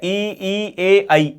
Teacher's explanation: ऐसे स्वर जिनका उच्चारण करने पर जीवा का आगे वाला भाग सक्रिय रहता है, अग्र स्वर